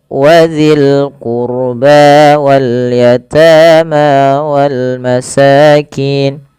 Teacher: Pada lafal qurba tebalkan ro-nya karena huruf ro sukun didahului dengan dhamma.